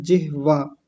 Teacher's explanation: आगे कहा जिवाग्रह जिहवाग्रह अच्छा एक चीज मैं थोड़ी सी बता दूं उच्चारण के संदर्भ में यह शब्द होता है जिहवा ह को मैं आधा कर रहा हूं व को पूरा ऐसे होता है जिहवा बहुत सारे लोग पढ़े लिखे लोग हिंदी के प्रोफेसर तक संस्कृत के बहुत अच्छे जानकार लोग जिहवा ना बोल के जिभ्या बोलते हैं।